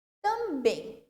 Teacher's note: Na língua portuguesa, palavras terminadas em em ou ens, onde a última sílaba seja mais forte, ou seja, a sílaba tônica é essa que termina ali o em ou ens, o acento agudo ele é inserido no e, mas ele fica com um tom fechado, fica com um timbre fechado